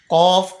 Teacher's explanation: कफ जबान की जड़ और तालू के नरम हिस्से से अदा होता है